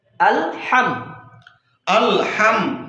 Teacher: হাম বলতে গেলে মিমটা কিন্তু আবার দুই ঠোঁটের শুকনা জায়গা থেকে বের হবে।